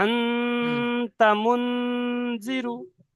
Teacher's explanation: জাল এসে তাই নুন সাকিনের আওয়াজকে নাকে তুলে একালি পরিমাণ গণনা করে পড়তে হবে। নুন সাকিনের আওয়াজকে নাকে তুলে একালি পরিমাণ গুণনা করে পড়তে হবে